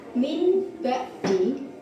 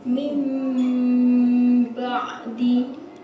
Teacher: Cara membacanya adalah bunyi nun sukun atau tanwin berubah menjadi bunyi mim sukun dan dipanjangkan dua harakat. Huruf iqlab hanya ada satu yaitu ba.